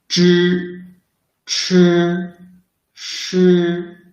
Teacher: They are pronounced by rolling up the tip of the tongue close to the hard palate. Zh should force the air out through the narrow channel between the tongue and the hard palate. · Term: retroflex sound